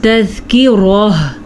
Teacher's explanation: جب وقف ہو جائے تا ایسے گول تا کے اوپر وقف آ جائے تو وہ گول تا ہا میں بن جاتی ہے